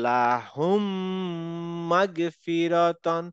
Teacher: তো লাহুম আবার এখানে মিম আছে তাহলে লাহুম মাগফিরা তাহলে এখানে মিমের সাথে মিম কিন্তু জয়েন হয়ে গেল মার্জ হয়ে একটা শব্দের মত শোনাবে আমরা কিন্তু আলাদা করে পড়বো না যে লাহুম মাগফিরাতান আমরা পড়বো · মিমের সাথে মিম কিন্তু জয়েন হয়ে গেল, হয়ে মার্জ হয়ে একটা শব্দের মতো শোনাবে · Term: ঈদগাম